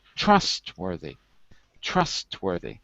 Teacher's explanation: Notice the stress is on the first syllable.